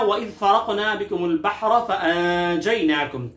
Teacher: वइज़ फ़रक़ना बिकुमुल बहर फ़अंजयनाकुम, यहाँ पर वइज़ फ़रक़ना की दाल को नरमी से, फ़रक़ना की क़ाफ़ को क़लक़ला से पढ़ेंगे, हुरूफ़ क़लक़ला में से है। बहरा की बा के साथ जो हा है उसको हल के दरमियानी हिस्से से अदा करेंगे।